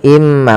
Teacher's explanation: maka cara bacanya masukkan ke huruf mim, yaitu imma, bukan lagi inma tapi imma, sambil ditahan gunnahnya 2 harokat. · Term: idgham bi gunnah